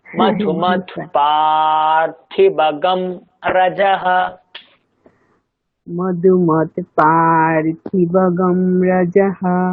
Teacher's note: হলো না, দেখুন পার, পায় দীর্ঘ আছে, থয় দীর্ঘ নেই।